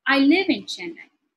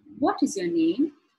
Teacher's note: when it falls it goes from a height to low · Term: falling intonation